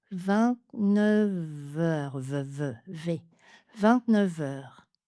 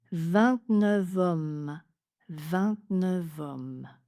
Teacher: 29 est prononcé avec une liaison en V avec les mots suivants: en, autre, heure et homme.